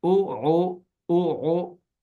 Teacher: حمزہ جھٹکے سے او اور او گلا گھونٹ کر آئیں